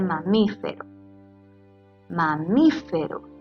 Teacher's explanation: debemos identificar que su sílaba tónica sea la antepenúltima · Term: esdrújulas